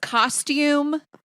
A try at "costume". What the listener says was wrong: Costume. Costume. Costume.